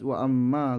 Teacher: karena ada huruf mim bertasydid dibaca dengung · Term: gunah musyaddah